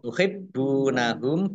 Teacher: Tuhibbunahum, baknya dibaca double, ada tasdidnya.